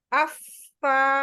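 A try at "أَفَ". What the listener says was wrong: Ya, jangan langsung dilepas. Afa, dorong kuat. Ketika mau dilepas, dorong kuat dulu udaranya.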